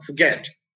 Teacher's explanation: it's accented in the second syllable